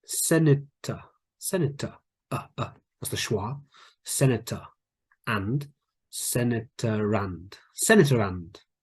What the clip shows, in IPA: senɪtərænd